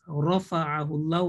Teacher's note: When ra carries a fatha or dhamma, it will be pronounced with a heavy sound, with a thick sound, full mouth. In this case, rafa'ahu Allah ra will be thick because it carries a fatha.